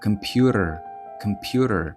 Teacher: Але це не буде computer, а computer. І в кінці з'являється flap t computer. Computer.